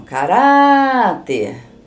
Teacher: Eu estou falando o Rá, mais prolongado o som. Então, o Rá é a sílaba tônica. Então, a última é o ter.